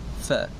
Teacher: apabila kita menyebutkan perkataan itu, terdapat sedikit keluarnya aliran nafas daripada sebutan yang kita sebut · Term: hamas